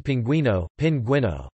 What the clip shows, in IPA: pinˈgwino